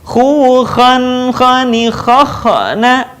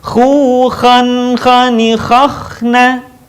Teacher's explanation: perhatikan ketika dalam posisi sukun, suara tidak boleh mantul.